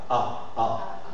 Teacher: la bouche ouverte les lèvres légèrement arrondi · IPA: [A]